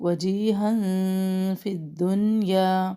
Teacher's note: اب تنوین کے بعد فا ہے، یہاں پہ اخفا کریں گے باریک